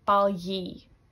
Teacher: They pronounce that G, but I say balyi. It's like a E sound.